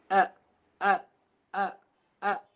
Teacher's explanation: where this sound a comes from is right behind your Adam's apple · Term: hamza